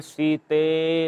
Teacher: तो वही लास्ट में जो लंबा समय खींच रहा है, त्रिमात्रिक स्वर का प्रयोग करके तब बुला रहे हैं